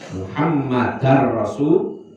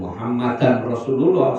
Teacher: suara tanwinnya dihilangkan langsung masuk ke ro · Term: idgham bila guna